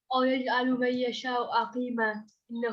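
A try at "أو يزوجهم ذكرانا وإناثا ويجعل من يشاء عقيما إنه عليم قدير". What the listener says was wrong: no, you missed a bit. أو يزوج, isn't it?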